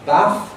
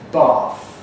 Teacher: the south of England, southeast of England, and received pronunciation underwent a change from a to r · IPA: /bɑːθ/